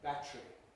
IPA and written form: ˈbætri (battery)